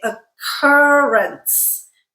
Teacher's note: the two k's just make one k sound we don't have like a double sound